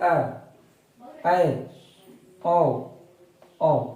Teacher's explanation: वैसा स्वर जिसको बोलने में आधा मुंह खुलता है, इसमें आधा बंद रहता है, बात वही है, आधा बंद खुलता है, अर्ध संवृता कहलाता है। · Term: अर्ध विवृत स्वर